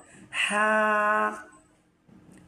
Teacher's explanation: আপনার গলার মধ্যখান থেকে। গলার মধ্যখান থেকে আপনার হা উচ্চারণ হয়।